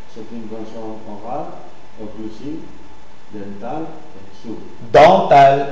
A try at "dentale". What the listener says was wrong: Vous dites dental. Vous prononcez N. Attention. Dentale.